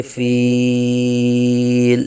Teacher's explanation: بالفیل، وقف کی وجہ سے لام ساکن ہو رہا ہے اور لام ساکن سے پہلے یا مدہ کا قاعدہ ہے، تو یہاں مد عارض ہوگی، تو 1 2 یا 3 الف تک کھینچ کے پڑھیں گے